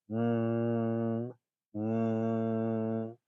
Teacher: you should be able to feel vibrations, very small ones, in the bridge of your nose